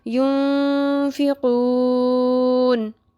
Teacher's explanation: آخر میں مد اصلی کے بعد نون ساکن آ رہا ہے تو یہاں پہ بھی ہم مد عارض کریں گے · نون ساکن آ گیا، آگے فا ہے، یہ باقی سارے حروف میں سے ہے، نہ حروف ہلکی ہے، نہ لام اور رو ہے، تو یہاں پہ اخفا ہوگا. اخفا کرنا ہے تو لمبا بھی کرنا ہے